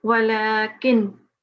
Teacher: So you've paused, making sure that if you're pausing in the middle here, you're not pronouncing the ikhfa or iqlab rule, but you are pronouncing the izhar and without ghunna